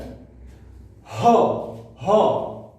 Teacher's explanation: ह का उच्चारण होते कंठ से।